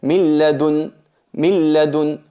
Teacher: Notáis que aquí fusionamos totalmente la nun. Aquí se llama, esta parte se llama idgham bi ghayri gunnah o idgham khales, fusión completa.